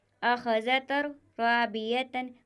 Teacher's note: یہاں پر تنوین کے بعد حروف ادغام میں سے را آیا ہوا ہے تو یہاں پر بھی گننا نہیں ہوگا، بغیر گننے کے ادغام ہوگا۔